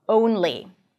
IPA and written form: oʊnli (only)